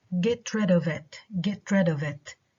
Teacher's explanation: no stress neither on the pronoun nor on the preposition